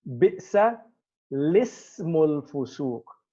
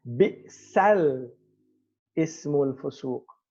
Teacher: the hamza is not pronounced